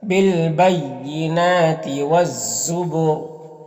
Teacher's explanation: وقف کریں گے تو را کا زیر سکون سے بدل جائے گا تو پھر را کو پر پڑھیں گے